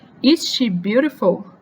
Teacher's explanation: no final a gente eleva bastante a última palavra